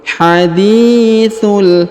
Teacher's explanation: huruf di dipanjangkan dua harakat karena di depannya terdapat Ya Sukun